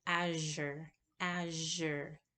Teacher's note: The yo is like j, azure, azure, and it's a voiced palatal fricative. Finally, we have the h, which is written as a lowercase h, and that is like as in hit, hit.